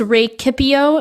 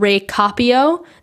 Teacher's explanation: the vowel shortens in the middle of the word